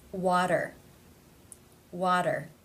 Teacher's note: This T comes between two vowel sounds. Therefore it is pronounced as the flap, tap T, or in other words, the D sound.